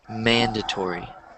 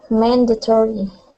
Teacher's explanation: the stress is in the first syllable